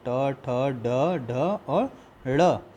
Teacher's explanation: ट वर्ग का उच्चारण स्थान कहाँ से होता है? मूर्धा से होता है। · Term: मूर्धन्य ध्वनि